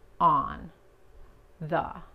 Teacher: la O en on y la A and the se pronuncia como la A en español, pero más relajada